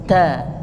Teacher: Kalau ta, t tapi berhembus